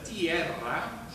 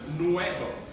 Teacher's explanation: a simple, short E and O of Latin becomes actually a diphthong, as for example in the Latin terra, land, that becomes tierra. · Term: diphthongation